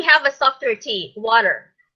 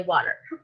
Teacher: you pronounce it d instead of t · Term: d sound